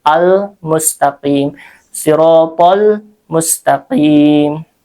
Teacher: Kalau ini alif lamnya qamariah sehingga terdengar jelas huruf lamnya. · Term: alif lamnya qamariyah, qamariyah